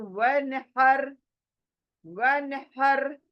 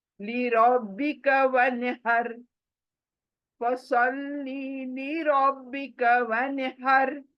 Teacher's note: یہ ہا حلق کے بیچ سے نکلتی ہے. تو ونحر, ونحر حلق کے بیچ سے نکالو.